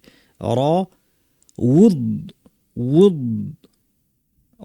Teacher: দদ হচ্ছে জিহ্বার 2 পাশ উপর পাটি দাঁতে লাগিয়ে গাল থেকে আওয়াজ করব।